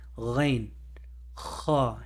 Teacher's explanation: the ghain and the kha come from the top of the throat. You can feel it if you put your fingers and you do ghain, kha. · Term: throat letters